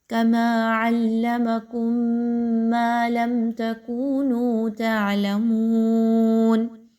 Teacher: ایک میم کی آواز کو دوسرے کے اندر ملا گیا، اور میم مشدد پر ہے تو اس لیے ہم نے تھوڑی دیر وہاں پہ رکے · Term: ادغام شفوی